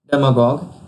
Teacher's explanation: its pronunciation is stressed on dem syllable